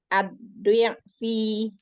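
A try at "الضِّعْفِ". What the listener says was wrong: Turunkan rahang dan bibir bawah kasrohnya.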